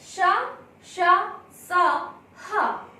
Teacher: इसके बाद है ऊष्म व्यंजन। ऊष्म व्यंजन इनके उच्चारण में मुंह से गर्म श्वास निकलती है।